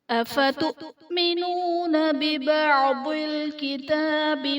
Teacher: افتؤمنون حمزہ ساکنہ ہے، جھٹکا دے کر پڑھیں گے